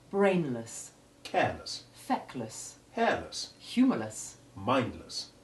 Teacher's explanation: while the simple word less has the short e1 sound this changes to the short e2 iv sound when the syllable is an unstressed suffix